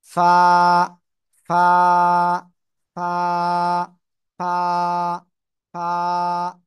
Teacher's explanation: এই অক্ষরটা, সবাই আমার দিকে তাকাতে হবে কিন্তু এই অক্ষরটা ক্লিয়ার হতে গেলে নিচের ঠোঁটের পেট উপরের দুই দাঁতের আগার সাথে লাগাবো, লাগিয়ে হালকা বাতাস বের করিয়া 1 আলিফটা নিয়ে উচ্চারণ করব।